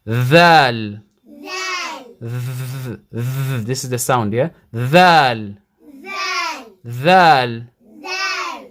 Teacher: The difference is that with tha, you're blowing out some air. But with dhal, there's no air. Instead, there's vibration.